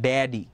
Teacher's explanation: ড্যাডির মধ্যে কিন্তু ঠোঁট ইউজ হয় না